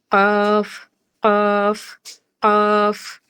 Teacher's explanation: এরপরে জিহ্বার গোড়া, কণ্ঠনালী শেষ হয়ে গেলে জিহ্বার গোড়া, জিহ্বার গোড়া তার বরাবর উপরের তালুর সাথে লাগিয়ে ২ নুক্তাওয়ালা কফটা উচ্চারিত হবে। · জিহ্বার গোড়া থেকে একটু আগে বেড়ে সেই জায়গাটা তার উপরের তালুর সাথে লেগে উচ্চারিত হবে